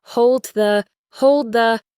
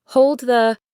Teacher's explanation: the D at the end of hold is often not fully pronounced. You put your tongue in the D position, but you release the air on the P sound of the hold the hold the It makes it smoother than hold D the Try it.